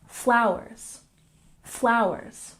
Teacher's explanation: flowers has emphasis on the first syllable